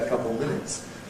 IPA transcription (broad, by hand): ə ˈkʌpl̩ ˈmɪnɪts